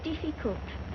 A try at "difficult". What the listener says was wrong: Diff. Not deaf. The word is difficult.